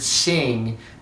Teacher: when you put the ing at the end, you can feel the back of your tongue hit that end palate and the upper roof of your mouth. So sing gets that whole tongue up there, and then you can just hold your tongue up there while you do that.